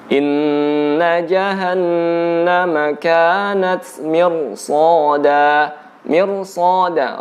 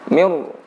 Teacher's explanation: Ra di sini ditebalkan. Cara menebalkannya dengan membulatkan bibir kita. Mir. Jadi pembulatan bibir ini membantu untuk menebalkan huruf ra.